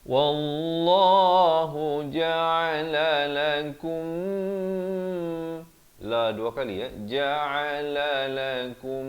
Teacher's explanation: Wallahu ja'ala lakum, la 2 kali ja'ala lakum. Di sini mim mati bila bertemu mim dia kena dengung 2 harakat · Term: idgham mislan saghir